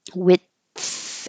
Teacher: Just stop the airflow and your tongue can be, instead of in the D position behind your top teeth, it can be in the TH position width. And I'm just stopping the airflow width and then relaxing my tongue so air can go over it and let the air flow for the TH.